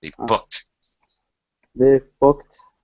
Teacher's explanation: after a K in a verb it's a t sound for the past tense Ed in regular verbs